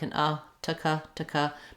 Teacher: I've written it here with the schwa like an taka, because you really want to be light and short on it. So you don't need, it doesn't matter too much what vowel you have on Arctica, Antarctica.